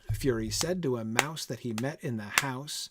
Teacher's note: four anapestic feet unstressed unstressed stressed per line